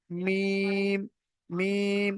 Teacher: ঠোট দিয়ে পড়া হবে যেহেতু মিমের মাখরাজ মিম এই দুটো ঠোট মিম দুই ঠোটের শুকন জায়গা শুষ্ক জায়গা থেকে হয় উচ্চারিত হয়